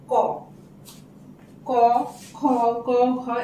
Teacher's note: ক বলতে গেলে ক যোগ একটা অ চলে আসছে